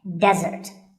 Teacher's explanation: of a meal and it should not be confused with desert here the stress is on the first syllable · Here, the stress is on the first syllable, which is de, desert.